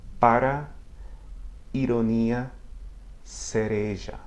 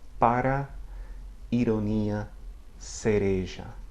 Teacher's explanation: Now, between vowels, where it often appears frequently, it's the single flap of the tongue against the ridge behind the front top teeth